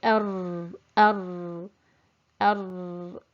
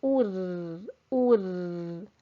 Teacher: I'm sticking the tip of my tongue up on the gum and leaving a small gap to avoid the trilling.